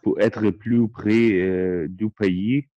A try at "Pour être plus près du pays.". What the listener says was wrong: Pays. مش بنقول با. مش بنقول باي او بي. بي. بي. Pays.